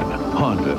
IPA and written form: ˈhɒndə (Honda)